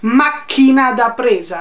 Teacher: una plosive che è la P che già ti interrompe il flusso di aria